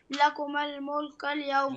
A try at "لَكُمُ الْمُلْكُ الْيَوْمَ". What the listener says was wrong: لكما خطأ لكم لا تقرأ هكذا يا ابني، أنا أحببت أن أصحح لك الحركة الإعراب الحركة اللي تكون على آخر الكلمة اللي تسميها الحركة الإعرابية، فاقرأها متواصلة هكذا.